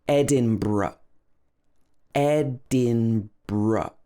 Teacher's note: Edinburgh. So it's actually br at the end. B-r, and then the schwa.